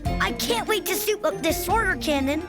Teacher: We also hear a husky, breathy voice